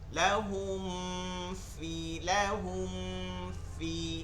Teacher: ফি কোথা থেকে আসে, উপরের 2 দাঁত তার নিচের ঠোঁটের পেট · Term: ফায়ের উচ্চারণ